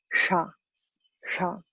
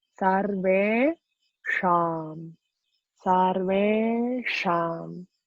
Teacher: That means the place of articulation is on the top of the dome, but with the bottom of the tongue. So you have to roll your tongue back, and then it's like the bottom of the tongue wants to touch the dome of the palate. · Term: murdhanya